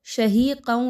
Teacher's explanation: قاف ہے اور موٹا والا قاف ہے جو کہ حروف مستعلیہ میں سے ایک حرف ہے۔ اس کو خوب موٹا کر کے پڑھیے۔ یاد رکھیے اس کو کاف کی طرح باریک نہیں پڑھا جائے گا۔